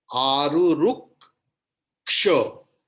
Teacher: So here ka will be doubled pronounced.